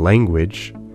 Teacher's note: Notice that ng comes before the velar stop g. This N has assimilated to the velar sound that comes after it. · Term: velar nasal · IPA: [lejŋgwɪdʒ]